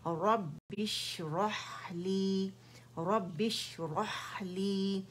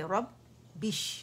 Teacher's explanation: دو با ہیں, ایک سکون کے ساتھ ہے, وہاں آواز جو ہے وہ بند ہو جاتی ہے